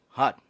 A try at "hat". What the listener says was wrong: Not hot, hat. The hat.